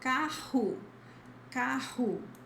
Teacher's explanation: You'll see the double R in the middle of a word, and it always has the same sound, which is the strong H, the strong H sound